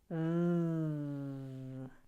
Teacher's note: It's a voiced fricative. Your top teeth gently touch your bottom lip. V. Your voice is on, which means you're creating sound in the larynx that you will feel as vibration if you place your hand gently on your throat.